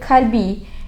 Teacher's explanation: keluarnya huruf Kaf ialah lidah bagian tengah